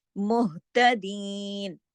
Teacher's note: ये जो हा है ये इसकी आवाज सीने की तरफ जाती है। दीन को दीन, दो हरकत खींचा हमने क्योंकि यहाँ पे या मद्दा है, ठीक है।